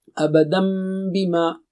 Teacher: تو اس کو شروع سے ہی میم سے پڑھیں آپ، ابدم بما، اور اس کو بھی غنے کے ساتھ پڑھیں گے. یعنی غنہ کیا ہے؟ 2 حرکت ناک سے